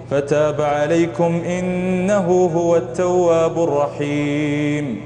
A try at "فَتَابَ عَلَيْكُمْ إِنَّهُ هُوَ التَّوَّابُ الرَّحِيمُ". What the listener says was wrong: وقفت كثير في غير موضع وقف، والمدود راحت والغنن راحت، كويس إن الحروف بقي.